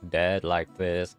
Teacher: my voice has so much vocal fry because i talk dead like this